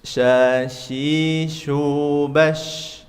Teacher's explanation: Tipiskan dikit tapi harus ada sifat eee at-tafasyi, anginnya menyebar. Karena sifatnya huruf syin itu anginnya menyebar.